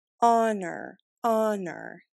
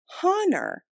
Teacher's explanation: the H in the word honor is silent